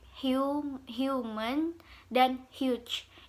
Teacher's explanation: Itu H, itu seperti diikutin Y kecil di atasnya. Atau dengan alternatif yang kedua, kamu bisa menggunakan palatal approximant dengan simbol yang J kecil itu.